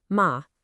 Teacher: A little dip, ma, and suddenly you're talking about a horse